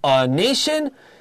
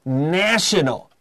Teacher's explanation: The A becomes a long A, so the noun form is a nation, the adjective is national.